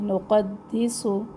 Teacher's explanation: سین میں سختی اور سیٹی